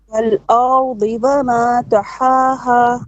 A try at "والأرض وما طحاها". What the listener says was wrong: Your wow doesn't. It's not very clear. It sounds like a vama. It's wa wama.